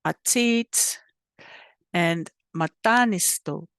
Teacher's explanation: The short a sometimes sounds more like the sound in what or but, especially when followed by a long consonant or 2 different consonants.